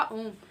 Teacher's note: जैसे ओम हमने बोला ओ तो इसमें कई गुना तीन गुना समय लगा है